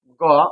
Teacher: শ্বাস বায়ু কম লাগে তাই এটাকে বলা হয় অল্পপ্রাণ বর্ণ